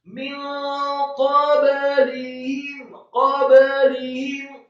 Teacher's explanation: qafnya dibaca tafkhim, fathah satu harokat, kemudian ba-nya dibaca sukun dan diqalqalahkan atau dipantulkan. Kemudian huruf lamnya dibaca kasroh tipis satu harokat.